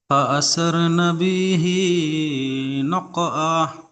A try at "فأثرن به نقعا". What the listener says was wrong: নুনটা টান হবে না, ফাআসারনা বিহি নাকআ।